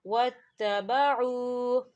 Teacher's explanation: واو ساکن ہے، واو ساکن سے پہلے پیش ہے تو یہاں واو مدہ ہو رہا ہے، تو اسے ہم دو حرکت کے برابر کھینچ کے پڑھیں گے